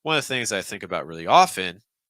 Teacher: So I would cut off the stress. I would take off the stress on think · So our pitch isn't really doing that range. And so we have too many stresses. So it's making it sound really choppy.